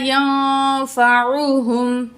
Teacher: نون ساکن کے بعد فا حروف اخفا میں سے نون کی آواز کو ناک میں چھپا کے پڑھیں گے